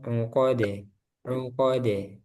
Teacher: Uqode itu panjang qafnya. Langsung ke dal uqode.